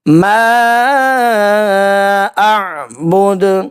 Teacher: مد منفصل ہے، 2.5 سے 3 الف کے برابر کھینچ کر ادا کریں گے۔ اعبد، وقف کرنے کی صورت میں دال کے اوپر پیش ہے، تو یہاں پہ عارضی جزم آ جائے گا اور حروف قلقلہ بن جائے گا۔